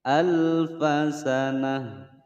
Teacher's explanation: tak marbutah disukunkan suaranya menjadi ha